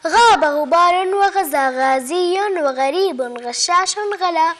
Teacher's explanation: الغين هو الحرف التاسع عشر من حروف الهجاء، مخرجه من بين أدنى الحلق إلى الفم قربا لها، وهو مجهور وأيضا رخو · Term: حرف الغين